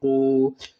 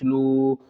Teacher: جزم ہو اس سے پہلے پیش ہو تو واو مدہ ہوگا، واو مدہ کو 2 کھینچ کر پڑھیں گے